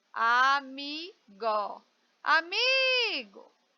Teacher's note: veja que eu me demorei mais no mi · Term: sílaba mais forte